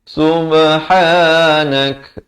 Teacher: Pastikan kafnya diberikan bunyi hamas kalau waqaf.